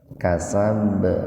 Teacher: huruf ba yang sukun di tengah-tengah kata, jadi dipantulkan secara sugro, secara kecil atau ringan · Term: qalqalah sugro